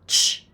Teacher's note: the ch sound is actually a combination of a t and a sh, both of which are unvoiced.